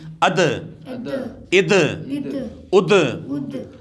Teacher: دال حروف قلقلہ میں سے آ رہا ہے، یہاں پہ خوب جماؤں کے ساتھ قلقلہ کریں گے، یعنی اد، اد، اد۔